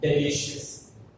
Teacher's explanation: One is delicious. So stress falls on the li because it is the second from the ending.